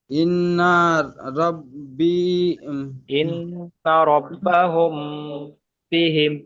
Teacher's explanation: মিমকে বা মিম সাকিনকে একালিফ পরিমাণ গুণনা করে পড়তে হবে, একে ইকফায়ে সাফাবি বলা হয়, ইকফায়ে সাফাবি।